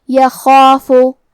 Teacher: بربہ فلا، کلمت یخافو میں حرف الخا ہے اور خا کی ادائیگی حلق کے اوپر والے حصے سے ہے، اور کیونکہ خا حروف تفخیم میں سے ہے تو ہم خا کو اور اس کے بعد مد الف کو دونوں کو تفخیم سے مطلب بھاری آواز میں ادا کریں گے